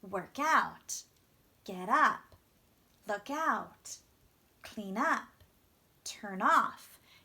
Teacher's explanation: you want that stress on that small ending part · with a phrasal verb, you want to stress the particle.